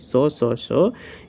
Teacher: इनके उच्चारण से स्वर तंत्रों में कंपन नहीं उत्पन्न हो रहा है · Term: अघोष